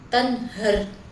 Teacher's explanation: terdapat hukum idhar halqi karena nun sukun bertemu huruf H. Cara membacanya jelas tanpa dengung, tanhar. Selanjutnya kita memasuki ayat yang terakhir, yaitu ayat yang ke-11 yang berbunyi wa amma bi ni'mati rabbika fahaddits.